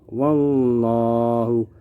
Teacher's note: Contoh bacaan tafkhim yang pertama, wallahu. Lafal Allah di sini berada setelah huruf yang bertanda baca fathah, maka dibaca tebal.